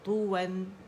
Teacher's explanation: complete rolling ہوگی lips کی